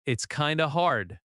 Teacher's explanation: The stress is on hard, not kind of.